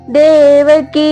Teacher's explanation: ದೇವಕಿ ಕಿ ದೀರ್ಘ ಇರಲಿ ಮತ್ತೆ ದೇ ಕೂಡ ದೀರ್ಘ ಇರಲಿ